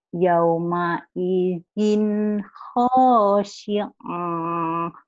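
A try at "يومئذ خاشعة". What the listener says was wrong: Kenapa panjang, Bu?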